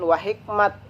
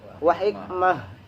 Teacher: tak tamarbutoh apabila diberhentikan maka menjadi ha. Jadi bukan wa hikmat tapi wa hikmah.